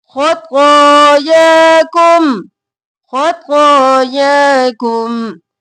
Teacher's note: خو موٹا اور کھینچیں گے، یا کو کھینچیں گے